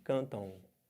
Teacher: mas vai ficar com som de dois vogais o nome disso é ditongo